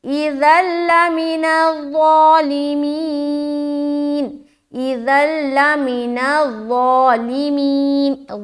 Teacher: ادغام تو کریں گے لیکن غنہ نہیں کرنا، بغیر غنے کے ساتھ ادغام کریں گے، یعنی کہ بغیر غنے کے ساتھ ہم ملائیں گے اور جلدی ادا کر کے یہاں سے نکلیں گے۔ · تو ضا کو موٹا ادا کریں اور یہ جو ذال ہے اسے باریک ادا کریں اور یہاں پر بغیر غنے کے ادغام کریں، یعنی کہ رکنا نہیں ہے۔ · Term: ادغام تام